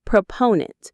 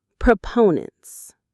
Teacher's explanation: The stress is on the second syllable. Proponent. Notice it's proponent, not propoundent.